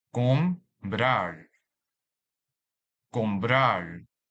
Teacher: the stress is on the last syllable, since the vocabulary ends with a different consonants rather than N or S. So we highlight the A in the second syllable to mark the stress of this word.